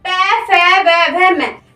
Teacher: तो पै वर्ग में पै, फै, व, भ, म पै, फ, व, म को बोल के देखो कि यह केवल हमारे होठ इसमें जो हमारे होठ होते हैं वो एक दूसरे को स्पर्श करते हैं। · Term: ओष्ठ